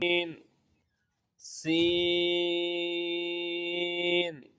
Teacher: जबान की नोक और दोनों दांतों के अंदरूनी किनारे से अदा होता है · اگلا حرف سین، سین، حروف صفیریہ سین، اس کا مخرج ہے زبان کی نوک اور دونوں دانتوں کے اندرونی کنارے سے ادا ہوتا ہے